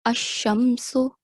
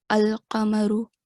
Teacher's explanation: the sound of lam, is completely concealed. We can't hear it.